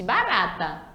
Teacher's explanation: apenas um R para dar esse som, onde a nossa língua dá uma dobradinha e é um som fraco